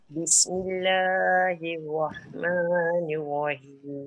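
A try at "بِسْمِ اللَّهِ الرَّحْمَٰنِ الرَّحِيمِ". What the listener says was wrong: Jangan lambat. Bismillahirrahmanirrahim. Nanti dia jadi 3 harakat. Kan Bismillahirrahmanirrahim. Tu 3. Bismillahirrahmanirrahim.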